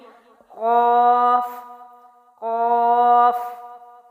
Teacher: زبان کی جڑ کو تالو کی کوے والی جگہ پر لگا کر، یعنی آپ کی زبان کا یہ جو پیچھے والا حصہ ہے، آپ کی جو گلے میں بیل ہے، اس ایریا سے ٹچ کریں گے تو قاف جو ہے موٹی آواز کے ساتھ ادا ہوگا۔